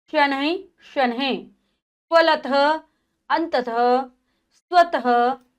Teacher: जब भी हम इसका विसर्ग का उच्चारण करते हैं हमें ह की ध्वनि सुनाई देती है।